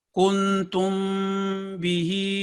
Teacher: हल्का सा 2 सेकंड का नेज़ल साउंड